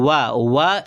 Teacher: एक ऐसा वर्ण है जिसका उच्चारण दांत और ओष्ठ से होता है, तो इसको दंतोष्ठ कहा जाता है।